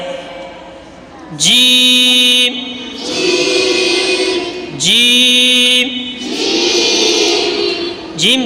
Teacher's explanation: جیم زبان کے درمیان اور اوپر کے تالو کے درمیان سے ادا ہوتا ہے،